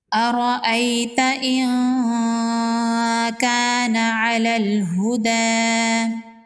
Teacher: ارأیت ان کان علی الہدی، را پر زبر ہے، را کو پر پڑھیں گے، یا لین ہے، اس کو نرمی سے پڑھیں گے۔ نون ساکن کے بعد حروف اخفا میں سے کاف ہے، یہاں پر نون پر اخفا ہوگا، نون کی آواز کو ناک میں چھپائیں گے۔